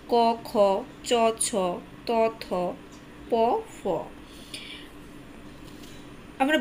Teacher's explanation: এগুলোর উচ্চারণকালে আঘাতজনিত ঘোষ বা শব্দ সৃষ্টি হয় না তাই এগুলোকে অঘোষ ধ্বনি বলে আবার এদেরকে শ্বাস ধ্বনিও বলা হয়ে থাকে ঘোষ ধ্বনি যেসব বাগধ্বনি